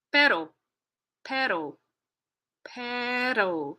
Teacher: that tap that flap which is a t in North American English is an r in Spanish